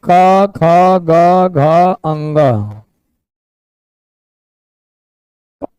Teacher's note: कवर्ग का उच्चारण स्थान कंठ है